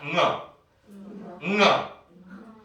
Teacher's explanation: 혀뿌리가 연구계 쪽을 꽉 막았다가 터지면서 소리가 나야 돼요.